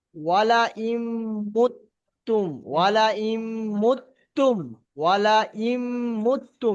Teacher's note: এই নুন সাকিনের পরে মিমটা যেখানে যেখানে এসছে সেখানে গুণনা করতে হবে।